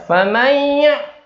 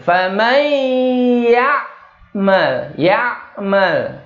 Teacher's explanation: Ya-nya jelas, jadi tidak ada dengungnya. Ya-nya nggak boleh ikut ke bawah dengung. · Ya-nya jangan ikut dengung. Hati-hati nih.